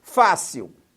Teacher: uma palavra terminada em L e a sílaba mais forte é Fá